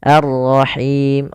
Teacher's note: rnya tebal yaitu ro tafkhim karena dia Ro berharakat tasydid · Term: ra tafkhim